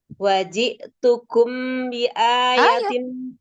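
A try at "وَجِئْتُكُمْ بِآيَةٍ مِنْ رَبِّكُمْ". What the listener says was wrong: Ikhfa syafawi. Mim ketemu ba. Jangan buru-buru. Selesain apa tuh harokat-harokatnya. tukum sama-sama harokatnya satu harokatnya samain, jangan tukum kecepatan itu samain.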